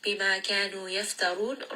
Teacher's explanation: ra in this case is also going to be heavy because it has a dhamma. وقالوا, qaf is heavy.